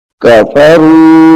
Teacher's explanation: را کو لمبا کر کے پڑھیں گے کیونکہ اس کے ساتھ حروف مدہ بھی ہے اور مد بھی لگی ہوئی ہے اوپر، تو یہ لمبی ہوگی 2.5 الف کے برابر.